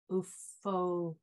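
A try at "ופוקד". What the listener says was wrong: Wait, this is Ufokade. That's a dalet, not a resh.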